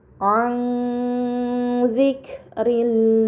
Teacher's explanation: Dan terakhir pada kata an zikrillahi terdapat nun sukun bertemu dengan huruf dal ini dinamakan ikhfa hakiki. Maka nun sukun dibaca secara samar dengan gunah yang dipanjangkan